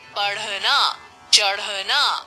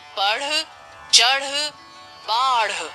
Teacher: ढ और ढ को उत्क्षिप्त व्यंजन भी कहते हैं। इनके उच्चारण के समय जीभ ऊपर उठकर झटके के साथ नीचे आती है। अब हम ड ढ ळ ळ वर्णों की पहचान के लिए कुछ अभ्यास करेंगे।